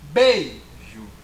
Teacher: se você falar bem alto, que o I ele é pronunciado muito fracamente. Então por isso o I é uma semivogal, ok?